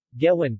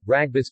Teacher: voiced velar plosive. Environment, syllable initial and final, or initial cluster.